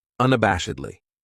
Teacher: This adverb has 5 syllables, and the stress is on that third syllable, that bash · That second syllable has that schwa, that sound, unabashedly.